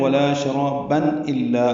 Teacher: ملانے کی صورت میں ولا شرابا الا آگے حمزہ اظہار ہوگا